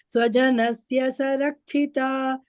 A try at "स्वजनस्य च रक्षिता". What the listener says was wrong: Cha you said is sa.